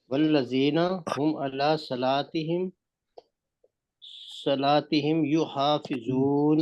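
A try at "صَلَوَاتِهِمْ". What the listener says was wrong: सलात नहीं है, सलावात है।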